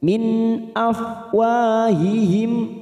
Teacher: nun sukun bertemu Hamzah idhar halqi kita baca jelas tanpa mendengung